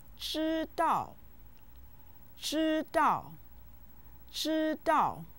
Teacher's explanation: it's said with the first and the fourth tones